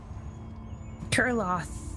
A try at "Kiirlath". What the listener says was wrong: Kurlath. I think you said like laugh or laugh or something, so